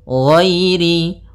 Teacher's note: Nah, ghainnya tebal. Ghairil, tapi tidak terlalu tebal sampai kepada huruf shad dan huruf dhad, karena huruf dhad yang paling tebal.